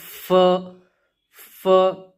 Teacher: ऊपर के दांत है उनका जो किनारा है उसको हम नीचे के होंठ पर लगाएंगे